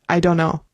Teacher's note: We're going to not really pronounce the T.